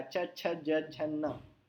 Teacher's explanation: इसमें दांत और टंग में कोई कांटेक्ट नहीं है।